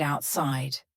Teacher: The word outside has a T in the middle, but because this word is kind of 2 words put together, we're going to have a stop there in the middle. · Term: stopped T